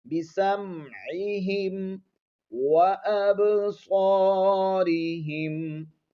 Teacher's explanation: نہیں ہے، بسام اس طرح کی آواز نہیں ہوگی، بِسَمْعِهِمْ وَأَبْصَارِهِمْ، با پر قلقلہ، صاد کو موٹا پڑھیں گے